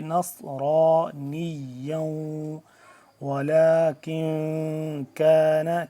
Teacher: اب یہ جو ہم پڑھیں گے سین اور صاد میں ہم نے یہاں پہ فرق کرنا ہے۔ نون صاد زبر نص تھوڑا پر کر کے پڑھیں گے